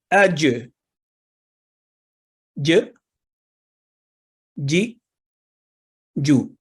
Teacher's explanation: जीम, ये हरूफ लिसानिया में से है, यानी जबान का दरमियानी हिस्सा ऊपर तालू से लगाकर यह हर्फ अदा होता है।